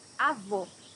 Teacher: Here you have a closed O.